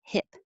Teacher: hip has the I, which is lower than E, like heap. So if yours sounds like he, then their tongue's too high.